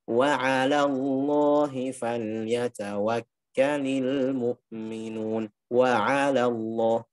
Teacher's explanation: Jadi yang tebal hanya lam ismul jalalah karena kaidahnya sebelumnya fathah.